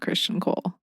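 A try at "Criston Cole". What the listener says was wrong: Kristen. You always say Christian. Yeah, it's Kriston.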